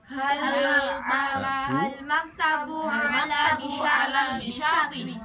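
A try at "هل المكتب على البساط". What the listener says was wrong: Nah, alif lamnya tetap harus ditambahkan. Jadi kan tulisannya itu hal al maktabu kan gitu. Nah, itu dilangsungkan aja. Halil maktabu ala bisyati lagi.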